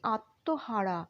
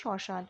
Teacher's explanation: হ্যাঁ, ময়ের উচ্চারণটা উহ্য থাকবে।